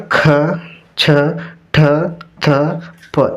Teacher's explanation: ಹೆಚ್ಚು ಉಸಿರು ಕೊಟ್ಟು ಉಚ್ಚರಿಸಲಾಗುವ ಅಕ್ಷರಗಳಿಗೆ ಏನಂತ ಕರೀತಾರೆ ಮಹಾಪ್ರಾಣ ಅಕ್ಷರಗಳು